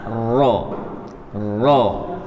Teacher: pada posisi gusi dua gigi seri atas roh-roh Ya Roh jadi dia harus bergetar tapi getarannya jangan lebih dari dua roh-roh hindari eroh ini hindari er terlalu lama atau terlalu banyak